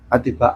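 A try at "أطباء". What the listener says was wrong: Atibau kan gitu. Nah, antum tadi kan ati. Toknya jangan di tasdid.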